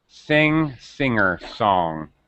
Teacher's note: The tongue is far back in the throat, singing, but there's no G sound.